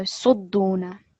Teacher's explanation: the stress needs to be on the dal rather than the sad. Yasudduna, yasudduna, emphasis on the dal because it has the tashdid.